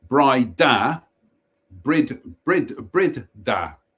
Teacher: pronounced brider with the emphasis on the second syllable